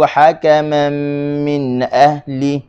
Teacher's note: huruf ha, halkum tengah